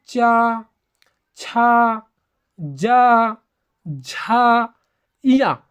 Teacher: जीभ जब तालु को छूता है ना तो उसे क्या बोला जाता है तलव्य व्यंजन बोला जाता है।